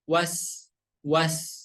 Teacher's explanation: tidak boleh dipantulkan harus dialirkan